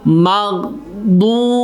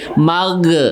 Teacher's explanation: Nah, itu gha yang sukun itu nggak boleh memantul ya.